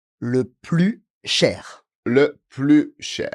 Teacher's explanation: Yeah, I would not say the S of plus.